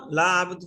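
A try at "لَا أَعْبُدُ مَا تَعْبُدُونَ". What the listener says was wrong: ভাই বদু কেন বুদু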